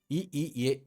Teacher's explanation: மேல்வாய் பல்லை நா விழும்பு தொடுவதால் தோன்றுவது